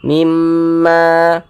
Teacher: Ini ada alif, sebelumnya ada huruf yang memiliki tanda baca fathah. Maka huruf yang memiliki tanda baca fathah ini dibaca panjang, sehingga ma dibaca panjang. Mad tabi'i panjangnya 2 harokat.